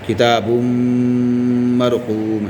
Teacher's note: کتاب الفجاری. یہاں پر تنوین کے بعد حروف جر ملون میں سے میم دوسرے کلمے میں آیا تو غنہ کے ساتھ ملا کر پڑھیں گے